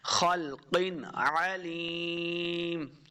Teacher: عین حروف خلقی سے ہے تو یہاں ہم نے بغیر غنہ کے پڑھنا ہے، اظہار کا قاعدہ ہے، خلق علیم، عین پڑھنا ہے، علیم نہیں پڑھنا۔